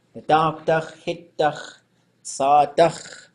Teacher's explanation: the closed suffixes in Tlingit are always high